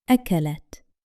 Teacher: However, for the pronoun hiya, the ta has sukun, the small circle above it, so the ending has no vowel, and only the letter ta is pronounced with a clear, stopped sound